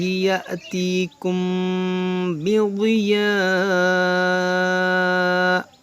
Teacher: یہاں میم ساکن کے بعد با، یہاں پر اخفاء شفوی ہوگا، یعنی یہاں پر غنہ ہوگا